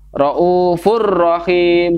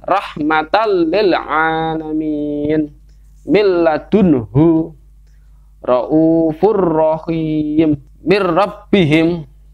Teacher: Jadi tanwin atau nun ini nanti masuk ke dalam huruf lam atau ra lalu dilanjutkan. Itu tanpa berdengung. Itulah disebut idgham bila gunnah.